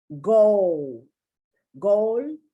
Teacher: you don't really pronounce that l but sometimes you do because you want to distinguish it from gold